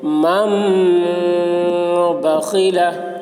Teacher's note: نون ساکن کے بعد با آ رہا ہے، اس لیے نون کو میم سے بدل کر غنہ اور اخفا کے ساتھ پڑھیں گے، اس کو اقلاب کہتے ہیں۔